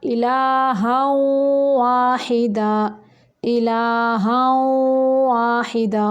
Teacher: اس کو ادا کرتے وقت ہونٹوں کو گول کریں گے کیونکہ واو ہے